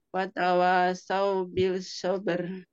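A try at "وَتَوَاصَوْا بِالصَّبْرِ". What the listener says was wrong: Bukan wa tawasaw bil, tapi wa tawasaw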